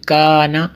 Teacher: یہ کاف کشک والا جو ہے یہ باریک ہے، اس لیے یہ کا الف جو ہے یہ بھی باریک ہوا